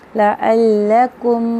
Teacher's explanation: میم کی آواز کو پڑھا جا رہا ہے، اظہار شفی ہو رہا ہے